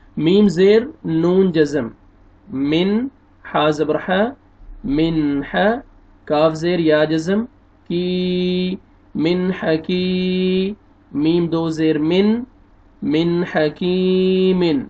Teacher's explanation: نون ساکن کے بعد حروف حلقی میں سے حار ہے اور آپ نے یہاں پہ اظہار کرنا ہے